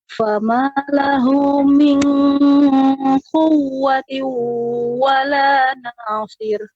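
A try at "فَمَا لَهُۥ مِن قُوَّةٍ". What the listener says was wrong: Perhatikan pada ini nun sukun ketemu nun qaf, ya ini ikhfa, qaf huruf isti'la, sehingga pengucapannya harus lebih dalam lagi. Tidak sekedar min quwwatiu.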